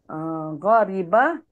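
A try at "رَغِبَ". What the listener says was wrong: Bukan, hurufnya tertukar lagi.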